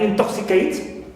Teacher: In is neutral, sorry, and to is stressed